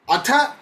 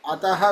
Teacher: ನೋಡಿ, ಅಥ ಬೇರೆ, ಅತಃ ಬೇರೆ. ಅಥ ಅಲ್ಪ ಪ್ರಾಣ ಅಲ್ಲ, ಮಹಾಪ್ರಾಣ ಥಕಾರ. ಅತಃ ಅಲ್ಪ ಪ್ರಾಣ ತಕಾರ, ಸರಿನಾ? ಅಲ್ಪ ಪ್ರಾಣ ತಕಾರ.